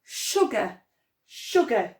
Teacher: we've got a tricky s making a sh sound